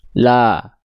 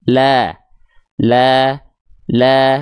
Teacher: SS artinya sedikit senyum. Buka mulut, sedikit senyum agar vokal A-nya tipis si fathahnya. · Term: Lam tipis